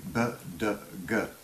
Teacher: And you can, when set together, you can hear the obvious relationship of that explosive, the sound being stopped and then suddenly let free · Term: explosive consonants